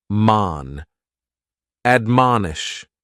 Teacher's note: admonish has 3 syllables, and the stress is on that second syllable, mon